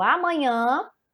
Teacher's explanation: a sílaba tônica sílaba mais forte é última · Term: palavras oxítonas